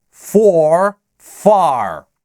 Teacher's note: сначала звучит чистый гласный, и только потом к нему подмешивается R